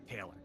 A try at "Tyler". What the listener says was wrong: Is it Taylor? I thought it was Tyler. I think it's Tyler because there's no A. Tyler.